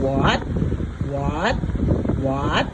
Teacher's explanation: rising tone the second tone is going up going up